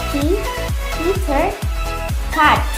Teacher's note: Voiceless alveolar plosive